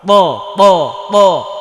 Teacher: তো ওপরের সামনের ওপরের, ওপরের সামনের দুইটা দাঁত আছে, এই দাঁতের গোড়ায় লাগাতে হবে জিব্বার আগাটা, জোরে প্রকম্পিত করে আওয়াজ করতে হবে ত মোটা ত ত ত।